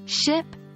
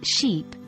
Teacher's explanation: ship and sheep differ only in vowel length yet they have entirely different meanings